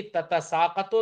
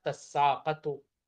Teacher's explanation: ایسی تتساقتو تھا تو دوسری والی تا کو سین سے بدل دیا اور سین کا سین میں ادغام کر دیا، ہو جائے گا تساقتو.